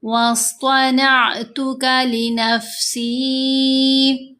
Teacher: صاد کو موٹا پڑھنا ہے، حروف مستعلیہ میں سے ہے